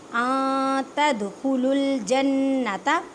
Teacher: نون ساکن کے بعد تا ہے، تا حروف اقفا، اقفا کا قاعدہ کریں، ان نہیں کہنا